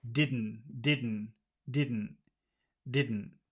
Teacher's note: in North America we don't like to pronounce T's at the end of words